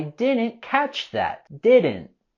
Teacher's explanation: we can also not pronounce the T at the end of didn't